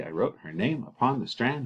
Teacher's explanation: you'd have the unstressed followed by stressed